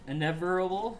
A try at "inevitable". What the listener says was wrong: There's a T in that word, not the word never. Inevitable. Inevitable.